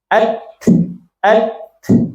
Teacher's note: Jadi huruf Ta ini ya suaranya tertahan tapi napasnya ngalir gitu